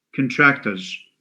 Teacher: You have two schwas. A schwa after the ka and another schwa after the t sound.